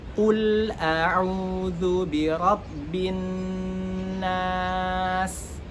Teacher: kemudian ada sin sukun yang mana memiliki sifat hams. · Dan juga nun yang bertasydid ini memiliki sifat gunnah namanya. Gunnah itu harus didengungkan 2 harokat. Untuk gunnah itu makharijnya adalah khayshum, yakni rongga hidung. Jadi untuk pelafazan huruf nun di situ harus masuk ke dalam rongga hidung.